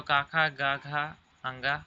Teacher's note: कंठ से निकलती है, उच्चारण स्थान कंठ है